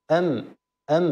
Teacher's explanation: إذا كانت ساكنة فهي بانطباق الشفتين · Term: الميم الساكنة